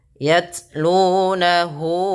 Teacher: baca taknya itu dengan sifat jaharnya dulu, tertahannya suara, baru ke hamasnya